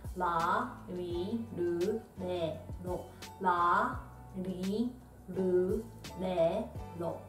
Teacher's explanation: Almost sounds like you can hear the D sound, but your tongue is go on top of your mouth like this one.